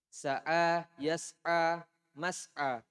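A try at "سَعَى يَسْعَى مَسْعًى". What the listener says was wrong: Mas'an. Tanwin, ditanwin. Sama majron ya, ditanwin.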